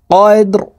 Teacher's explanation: এই দাল কলকলার হরফ নিচের দিকে ধাবিত করে ধাক্কা দিয়ে উচ্চারণ করতে হবে